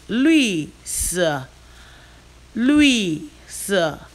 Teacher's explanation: Lui is the fourth tone. Si is also the fourth tone.